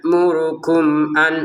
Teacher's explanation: Mim sukun bertemu hamzah baca dengan jelas ya. Ya'murukum an, ini jelas.